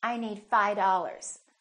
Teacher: that V in the word five just kind of disappears